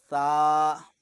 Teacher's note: اور اس کا آسان سا طریقہ یہ ہے کہ آپ جب بھی سا پڑھیں گے تو آپ اپنی زبان کا جو اگلا حصہ ہے اس سے آپ اوپر والے دانتوں کی نوک کے ساتھ لگائیں گے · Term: 3 نقطوں والا سا